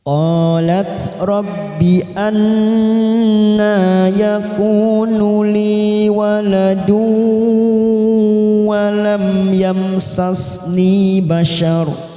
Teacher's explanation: Qa fathah diikuti alif 2 harakat, lat. Qalat rabbi anna, nun yang bertasdid bacaan gunnah, kita tekan 3 ketuk, siap masuk ke huruf nun.